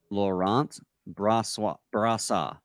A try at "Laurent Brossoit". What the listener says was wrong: You keep trying to throw in a W in there.